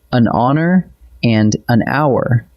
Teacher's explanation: Both are spelled with an H, but the H is silent, so the word actually opens with a vowel sound, and we reach for an.